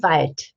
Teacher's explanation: Final obstruent devoicing, it sounds like a T.